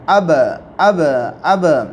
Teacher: جب اب بولیں گے تو ہمارے ہونٹ 2 مرتبہ وہاں پر ٹکرا کر واپس اوپر آئیں گے، اب، تو یہ ٹکرانا ہوا، تو ان کے مخرج ٹکر کھا کر، جب ان پر جزم ہو تو اس وقت ان کے مخرج ٹکر کھا کے الگ ہو جاتے ہیں۔